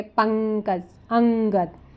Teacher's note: अनुस्वार बोला गया तो ये स्वर के बाद आने वाला व्यंजन है जिसकी ध्वनि नाक से निकलती है